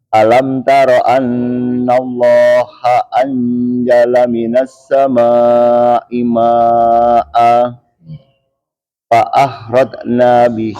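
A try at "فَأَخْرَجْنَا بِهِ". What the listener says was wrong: Kho ya, agak ngeras sedikit ya. Sedikit.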